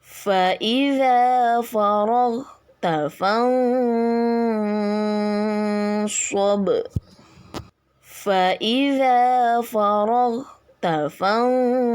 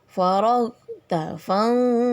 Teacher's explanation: Nah itu ikfa ya, cara membacanya samar dengan dengung serta ditahan 3 harokat